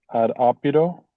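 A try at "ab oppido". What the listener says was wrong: Opido. You sound like you said odd.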